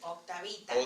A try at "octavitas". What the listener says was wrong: Yeah, it sounded like you were saying octavita and dropping the S.